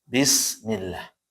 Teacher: lafaz Allah ini ada yang tebal, ada yang tipis. Namun di sini dia tipis kenapa? Sebelumnya kasroh.